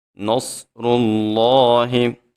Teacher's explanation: صاد بھی موٹا ہوتا ہے، جب را کے اوپر پیش آ جائے را کو بھی موٹا پڑھتے ہیں